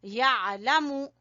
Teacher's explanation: आइन को गले के दरमियान से , यअलमु, लाम को छोटा और मीम को भी छोटा, यअलमु,